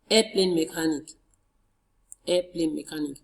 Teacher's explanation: Two-word compound noun. And in noun plus compound nouns, the stress is on the first word.